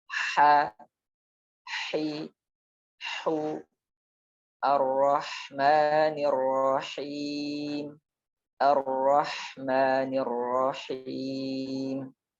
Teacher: katup tenggorokan ini ketika mengucapkan huruf H, dia tidak sekuat ketika mengucapkan huruf ain, menempel ke dinding tenggorokannya. Jadi hanya mendekati begitu saja, dan udara mengalir lebih deras dibandingkan ketika mengucapkan huruf A. · H suaranya lebih lembut daripada Kho karena dia terucap dari tengah tenggorokan dan tidak ada istilahnya seperti suara serak dan seterusnya, tidak ada.